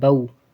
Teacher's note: واؤ کی آواز نکالنی ہے، آخر میں ہونٹ گول کرنے ہیں